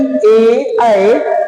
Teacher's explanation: जीभ का अगला भाग ऊपर उठता है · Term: आद्र भाग